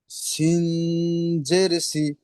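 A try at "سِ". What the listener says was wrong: সিনের টানটা ভুল হয়েছে, সিন এমন ভাবে হবে না, সিন জের সি।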